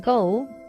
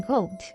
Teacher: the phonetic realization of the vowel O in go is longer than its realization in gold